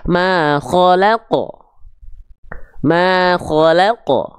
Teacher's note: sifat syiddah pada huruf qaf itu bukan pada pantulannya tapi pada makhraj huruf qofnya